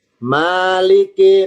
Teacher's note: mimnya fathah. Maliki maanya panjang.